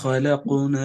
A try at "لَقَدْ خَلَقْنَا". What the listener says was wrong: லகது தால் தால் மாறுதுங்க. லகது து தான் வருது. லகது லகது தால் மாறிடும்.